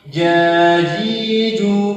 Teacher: Itu salah. Yang benar tanpa berhembus, tanpa berdesis.